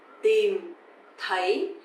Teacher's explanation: tìm is dấu huyền, you have to go down, and thấy, dấu sắc, you have to go up.